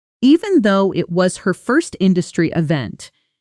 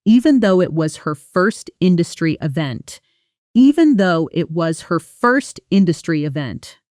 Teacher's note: Notice the connected speech there. Even though often blends together in fast speech, almost sounding like evento.